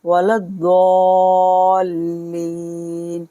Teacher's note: लाम को द्वात के साथ मिलाएंगे, वलद्दॉल्लीन, यहाँ मद्दे लाजिम होगा क्योंकि यहाँ हुरूफ मद्दा है, उसके बाद तस्दीद है।